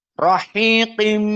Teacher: Qaf dalam keadaan mufakhamah meskipun kasrah. Rahiqim. Dan dia tanwin bertemu dengan mim.